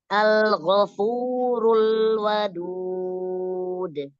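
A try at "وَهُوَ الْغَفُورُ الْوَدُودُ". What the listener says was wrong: Rul masih ketebalan lamnya. Wa huwal ghafur wal wadud.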